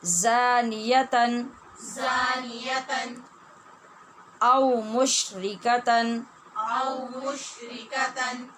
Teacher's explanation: زانیتن اور مشرکتن یہ جو دونوں تنوین ہیں ان پر اخفا نہیں کیا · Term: اظہار